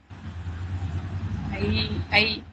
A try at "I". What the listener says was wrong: ஐ வந்து இ சொல்லணும்.